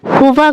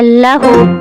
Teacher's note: ہا سانس گرم سانس آتی ہے نرمی کے ساتھ گلے سے اور اس کے ساتھ آواز